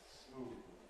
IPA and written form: smuːð (smooth)